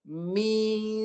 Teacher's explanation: Yang betul dia, mi keluar kat mulut dulu, lepas tu baru tolak ke hidung, bahagian tengah hidung. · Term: dengung